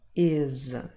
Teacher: So we have is, I and z together, all voiced, is. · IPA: /ɪz/